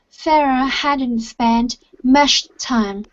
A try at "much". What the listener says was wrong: Okay, so you're saying mush. Instead of mush time, it's much time. So instead of mush, it's much time.